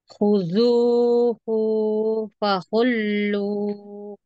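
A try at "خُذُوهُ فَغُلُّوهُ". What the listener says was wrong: Hu-nya jangan panjang karena tidak ada mad di situ. Jangan khuduhu. Jangan hu tapi khuduhu faghullu. Hanya ghainnya itu kalau ghain itu dia tidak mengalir nafas. Ya, dia jahar. Jadi jangan khullu tapi ghu, ghu.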